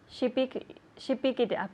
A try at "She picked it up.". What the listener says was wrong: Okay, the T at the end. She picked.